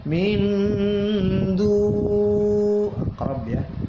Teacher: nun mati ketemu dal dibaca ikhfa ma'al gunnah. Min du aqrab ya, ikhfa aqrab.